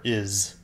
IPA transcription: ɪz